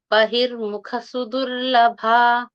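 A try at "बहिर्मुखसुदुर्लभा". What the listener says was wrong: very good ಉತ್ತಮ ಧನ್ಯವಾದ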